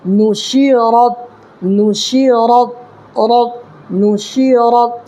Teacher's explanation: شین کو جلدی ادا کرنا ہے اس لیے کہ زیر ہے۔ میں نے اجرا کر کے بتایا تھا پچھلے سبق میں کہ شین کے نیچے زیر ہے، جس شین پر زیر کی حرکت ہے، زیر کی حرکت کو جلدی پڑھیں، تھوڑا بھی نہ کھینچیں، معروف پڑھیں اور مجہول آواز سے بچیں، ٹھیک ہے؟